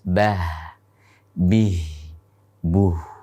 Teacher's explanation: Kemudian ha, ketika dalam keadaan sukun maka akan mengalir pada nafas, bah, bih, buh, dan seterusnya.